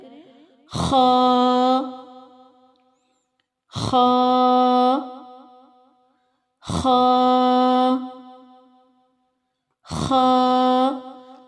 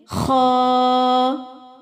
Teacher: خا کے اوپر ایک نقطہ ہے اور نقطے والی خا حلق کے پہلے حصے سے ادا ہوتی ہے جو منہ کی طرف آتا ہے